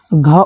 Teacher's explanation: घ का उच्चारण स्थान जो है कंठ से होता है